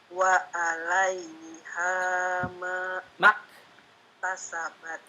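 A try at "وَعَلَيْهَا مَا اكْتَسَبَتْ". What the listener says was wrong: Ulangi, mak langsung. Ainnya tambah lagi. Wa 'alaiha maktasabat.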